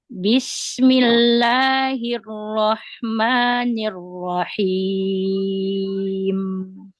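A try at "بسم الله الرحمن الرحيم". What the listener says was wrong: Nah, terlalu rendah. Udah terlalu rendah arrahimnya.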